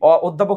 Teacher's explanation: অধ্যাপক শব্দের অ আছে না এই অ কিন্তু ও এর মত হয়ে যায় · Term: সংবৃত